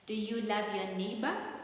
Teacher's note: we can use the rising intonation because it is a yes/no question. Yes/no questions have the rising intonation.